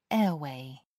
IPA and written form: ˈɛəˌweɪ (airway)